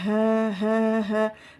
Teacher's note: Kita sering tertukar ya huruf H besar dengan H kecil. H ini makhrajnya di mana? Yaitu letaknya di pangkal tenggorokan. Bagian bawah ya, keluarnya huruf hamzah dan H.